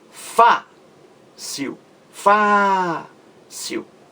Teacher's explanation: Fácil leva acento gráfico porque é uma palavra paroxítona terminada em L. A sílaba mais forte é Fá.